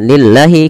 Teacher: lafal Allah dibaca dengan tipis, bukan dibaca dengan lillahi, tapi dibaca dengan lillahi, karena lafal Allah didahului dengan huruf kasrah.